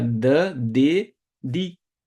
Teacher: d é dental sua língua toca a parte de cima a parte de mais alta da arcada de cima